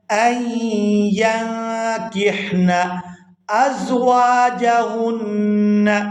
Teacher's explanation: آگے یا کو نون ساکن کے ساتھ ملائیں گے تو اخفا کریں گے. غنہ اور اخفا کی آواز ہمیشہ ناک سے ادا ہوتی ہے.